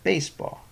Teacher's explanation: The spondee consists of two stressed syllables